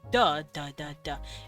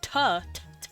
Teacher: d and d and T are basically the same sound it's just t t is voiceless while duh duh duh duh it's in the exact same spot